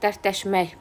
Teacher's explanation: Vurğu 3-cü hecanın üzərinə düşüb